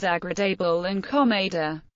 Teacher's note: The letter E is pronounced as schwa in the final unstressed syllables of words such as agradable and comada.